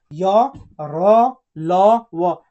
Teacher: इसका उच्चारण किससे हो रहा है, देखिए उच्चारण कीजिए, य र ल व, तो क्या हो रहा है, जीभ, जीभ ऊपर नीचे हो रहा है ना, जीभ के किसी भाग को पूरी तरह स्पर्श नहीं करती है। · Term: अंतःस्थ व्यंजन